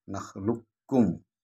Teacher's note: यह है बड़ा काफ और फिर छोटा काफ। तो बड़े काफ को पर ना जाते हुए ज़बान को डायरेक्ट छोटे काफ पर ले जाएंगे, उसको तशदीद से पढ़ेंगे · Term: इदगाम कामिल